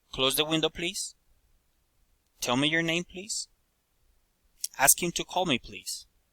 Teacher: Asking for help. Requests. Rising intonation.